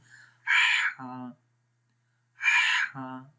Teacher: ہا کی آواز غور سے سنیں، میڈل آف دی تھروٹ آ رہی ہے، گلے کے درمیان والے حصے سے